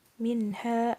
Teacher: huruf nun sukun bertemu dengan huruf H dibaca jelas tidak berdengung sama sekali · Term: Idhar